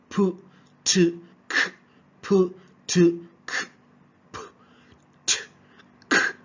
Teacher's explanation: We have complete closure of the vocal tract followed by a sudden release.